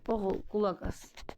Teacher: Burda oğul vurğu ikinci hecadadır.